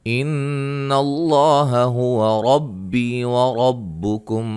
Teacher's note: نون مشدد پہ غنہ ہے۔ لفظ اللہ کے لام کو موٹا ادا کریں گے اور را کو موٹا، یا مدہ ہے اور را کو موٹا ادا کریں گے۔